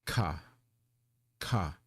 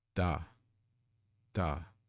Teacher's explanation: you feel the puff of air again aspirated consonant